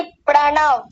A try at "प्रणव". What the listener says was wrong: प्रणव नहीं, प्रणव। प्र को अलग कीजिए, णव को अलग कीजिए। पड़ा क्यों? पड़ा मत बोलिए, सुनिए, पड़ा नहीं, प्र बोलिए,